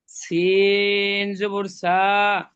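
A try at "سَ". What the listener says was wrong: না, আপনি ভুল করছেন। সিন জবর সা বলে একটু টান দিয়ে দিচ্ছেন, না টান হবে না, সিন জবর সা।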